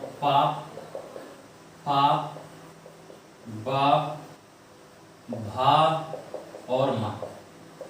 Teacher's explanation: दोनों ओष्ठ समान रूप से क्रिया करते हैं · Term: द्वयोष्ट व्यंजन